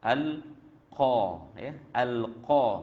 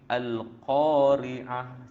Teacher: qaf tu letakkan pada tempat dia, ya, pangkal lidah di belakang sekali, pangkal lidah. Al-qa, ya. Al-qa, bunyi dia tinggi, ya. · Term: huruf qaf